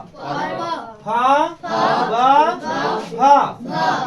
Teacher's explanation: इन सब का उच्चारण ओ ओट की सहायता से बोला जाता है और इसलिए इसका नाम क्या हो जाएगा ओ है ओ से